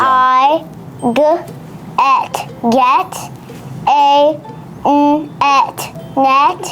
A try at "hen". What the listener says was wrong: No, that's an H. Slow down just a little bit.